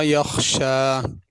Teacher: यख्शा खा को पुर करके पढ़ना है।